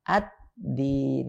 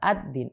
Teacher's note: Lam sukunnya nggak dibaca. Atau langsung diidghamkan ke huruf dal. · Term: idgham syamsi